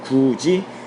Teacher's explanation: 굳이 디귿이 이를 만나서 지읒으로 바뀌었고요. 티읕이 이를 만나서 치읒으로 바뀌었다.